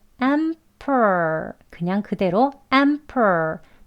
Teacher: 된 소리가 아닌 프 소리에 해당하는 발음으로 해도 되는 단어예요. 호흡이 편합니다. 내쉬는 숨이 충분히 남아있기 때문에요.